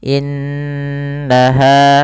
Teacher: nunnya ditahan karena ia ada bacaan gunnah